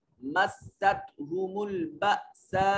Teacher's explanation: حمزہ ہے، ساکن ہے، جھٹکے سے ادا کریں گے